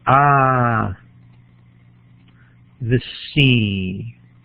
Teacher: So we've got here just and at the beginning of it, a stress syllable all by itself, followed by another iamb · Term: an extra stress